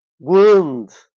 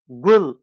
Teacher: Biz demiştik ki bu ses ne udur, ne ödür ne de üdür. Hepsinin arasında bir ses. I sesi. Mesela g dediğimizde buradaki ses ne ud'dur, ne ödür, ne de üdür.